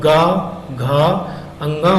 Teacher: तो जैसे का और खा बोला हमने तो हमारे गले में कम झनकार यानी झनकार उत्पन्न नहीं हुई, और हम गा घा अंगा बोलेंगे तो हमारे गले में झनकार उत्पन्न होगी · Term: घोष